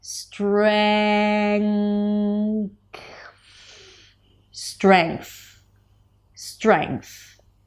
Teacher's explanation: You block the air in the mouth, but with the back of the tongue, the air still comes out through the nose. Then you bring the tongue up for the th. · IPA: streŋkθ